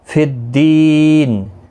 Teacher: فی الدین، اور یہاں پر دی یا مدہ ہے، ایک الف کی مقدار کے برابر کھینچ کر پڑھیں گے، یہاں پر وقف مطلق ہے، جب نون ساکن پڑھیں گے تو 3 سے 5 الف کے برابر کھینچ کر وقف کریں گے، مد العارض وقفی ہوگا۔